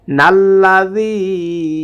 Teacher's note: জালটা জিহ্বার আগা থেকে নরম করে উচ্চারণ করতে হবে